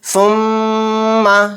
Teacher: تو اس میں زبان نہیں، ہمارے جو دونوں ہونٹ ہیں وہ آپس میں ملتے ہیں جب میم ادا ہوتا ہے، یعنی میم کے اوپر ہم تشدید بھی ہے اور اس کے اندر غنہ کریں گے تو کس طرح سے ہمارے ہونٹ ملیں گے، آپ دیکھیں، اس کو پڑھیں ثم۔ تو ثم کہتے ہوئے ہمارے جو دونوں ہونٹ ہیں وہ آپس میں مل رہے ہیں اور پھر پلس ناک میں آواز نکل رہی ہے، تو یہی غنہ ہے۔ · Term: میم غنہ